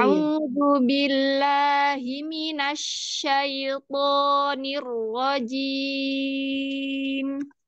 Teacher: terutama huruf shin tadi kan sifatnya rokhoah, jadi agak lama.